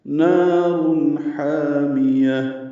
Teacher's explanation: نار حامیہ، نا الف مدہ ہے، 2 حرکات لمبا ہے، تنوین کے بعد ہا آنے کی وجہ سے اظہار ہے، نارن را پر پڑھیں گے اور اظہار کریں گے، ہا وسط سے ادا کریں گے اور الف مدہ ہے، 2 حرکات لمبا کریں گے۔